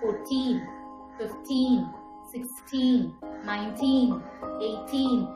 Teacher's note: so the teen numbers the second syllable should be expressed more